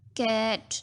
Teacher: कैट जो होता है वो सॉफ्ट पैलेट से प्रोड्यूस होता है। जब हम वर्ड बोलते हैं ना कैट, तो हमारी टंग सॉफ्ट पैलेट को टच टच करती है।